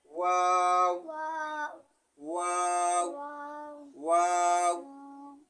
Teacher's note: দুই ঠোঁট গোল করিয়া ওয়াও হরফ উচ্চারিত হয়